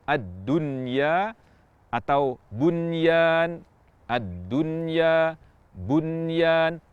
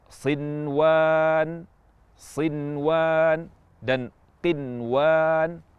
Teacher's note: kita ucapkan Nun dengan jelas tidak diidgamkan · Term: izhar